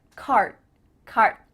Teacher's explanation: My tongue is flat against the roof of my mouth to make the D, but it's not coming out.